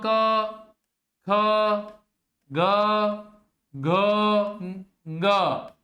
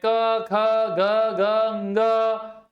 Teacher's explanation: अकुह विसर्जनीय नाम कंठ, ये पूरा सूत्र इस प्रकार से बोला जाता है: अकुह विसर्जनीय नाम कंठ, यानी कि अ आ कु यानी क वर्ग, क वर्ग में क, ख, ग, घ, ङ और विसर्ग, इनका जो उच्चारण होता है, इन वर्णों का जो उच्चारण होता है वो कंठ से होता है